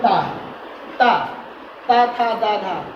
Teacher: इन वर्णों का उच्चारण करते समय हमारी जो जीवा है वो दांत को स्पर्श करती है। ठीक, बगैर दांत को स्पर्श करे इन वर्णों का सही उच्चारण नहीं कर सकते हैं, जो उसका उच्चारण होगा सही नहीं होगा।